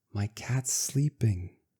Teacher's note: These are the same s sounds, so we just keep pronouncing s.